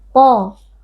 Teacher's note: Huruf tafkhim atau huruf tebal, to kita baca dengan mengangkat pangkal lidah. A. Mad tabi'i karena ada alif yang sebelumnya berharokat fathah, dibaca panjang 2 harokat.